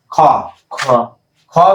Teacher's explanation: জোড় বেশি থাকে তাকে বলা হয় কি মহাপ্রাণ মহাপ্রাণ খ দেখো বলতে গেলে তোমার খ বাতাসটা একটু বেশি প্রবাহিত হবে